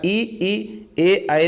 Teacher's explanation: ई, ए, आए, तो ये आपके अग्र स्वर में होंगे